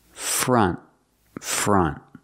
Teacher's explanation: the T at the end is a stop T you don't have to say front you don't have to release · you don't have to release the T just put the tongue up and stop the air